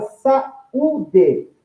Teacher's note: Então, na palavra saúde, note que houve uma pausa entre essas duas vogais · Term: hiato